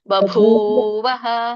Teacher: ಬ ಸಣ್ಣದಿದೆ, ಮುಂದಿನ ಬ ಮಹಾಪ್ರಾಣ ಇದೆ. ಬಭೂವಃ.